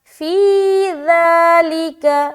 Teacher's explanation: یہاں پر ہے ذال، نرمی اور بغیر سیٹی کے، ٹھیک ہے۔ زبان کی نوک کو ثنایا علیہ کے کنارے پر لگا کر ادا کرنا ہے